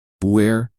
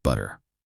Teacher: Americans often turn the T into a soft D sound. This is called flapping, so butter becomes butter.